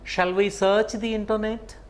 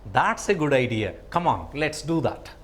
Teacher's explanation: Rising tone for questions and falling tone for making answers. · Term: intonation